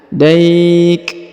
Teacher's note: Huruf kaf diberikan hembusan tipis ya